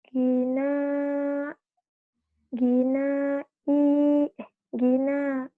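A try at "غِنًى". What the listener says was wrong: I-nya pendek. Nanya panjang.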